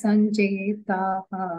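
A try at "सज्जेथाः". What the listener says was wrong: నాట్ సంజ సజ్జ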